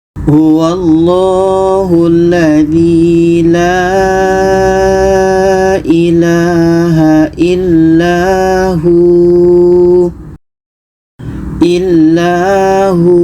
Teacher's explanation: Kita sukunkan, kita matikan. Jadi ketika berhenti hu ini ternyata dibaca panjang karena ada wau mati wau sukun sebelumnya ada huruf berbaris di depan. Jadi kita panjangkan dua harakat karena panjang wau mati atau mad asli wau.